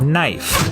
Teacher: A good example of this change is in the word knife. In Middle English, it was pronounced knief, but after the vowel shift, the K became silent